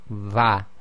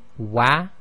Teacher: when you say va, you're using the makhaarij of the fa instead of rounding the lips like the wa